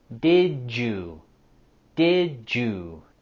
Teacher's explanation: we can use our linking between the words did and you with the j sound.